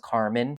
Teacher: Italian Americans like to drop that final vowel like all the time